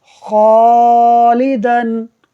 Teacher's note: خا حروف مستعلیہ میں سے ہے، پر ہے، تو اس کی وجہ سے الف کو بھی پر پڑھا جائے گا